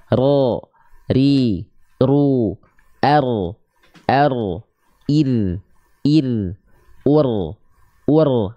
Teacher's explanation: Dia tetap bergetar lidahnya, ya, tapi bukan dengan getaran yang berlebihan sebagaimana kita melafalkan huruf R. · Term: takrir